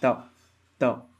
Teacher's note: त आप प्रोनाउंस करोगे ना जब भी तो आपके दांतों से जीभ टकराए गी